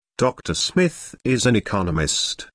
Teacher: notice the stress on Economist this content word has new information so it is emphasized